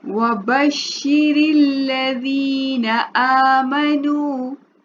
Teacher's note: अब वबश्शिरिल में रॉ के नीचे देखिए जेर आ रही है, ठीक है ना, जेर। तो जेर की वजह से रॉ जो है वो बारीक पड़ा जाएगा।